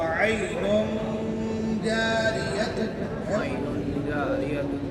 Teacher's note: عین کا جو نون ہے اس کو ظاہر نہیں کریں گے اس نون کی آواز کو ناک میں چھپا دے دیں گے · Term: اخفا